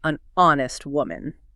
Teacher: While honest starts with the consonant letter H, that H is completely silent. When you speak it, the word begins with a vowel sound and O sound honest.